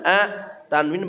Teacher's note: tanwin bertemu hamzah suaranya dibaca jelas dan ya tanpa dengung